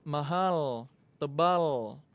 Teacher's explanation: kalau huruf L Indonesia lidah ketemu dengan langit-langit bagian tengah